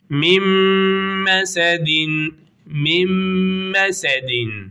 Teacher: Gunne geniz demek. Sesin genize gitmesiyle birlikte birbirine katıyoruz. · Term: İdgam me'al gunne